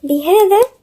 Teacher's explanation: الذال هنا من الحروف اللثوية